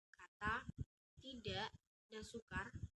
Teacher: Menyatukan bunyi-bunyi menjadi fonem yang sama, misalnya dalam bentuk kata, tidak, dan sukar, berada dalam distribusi yang komplementer. Fonem K yang berada di awal kata dan tengah kata diucapkan K, tetapi di akhir kata cenderung diucapkan glotal. Dalam hal ini, bunyi K dan tanda tanya pada kondisi tersebut termasuk fonem yang sama, K, bunyi tanda tanya merupakan alfon K.